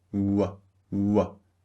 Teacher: the second sound, W, is a voiced sound. Start with very rounded lips, W, W, and finish with relaxed lips, W, as in we.